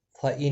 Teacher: نون ساکن کے بعد حمزہ ہے، اظہار ہلکی ہوگا، گنہ نہیں کریں گے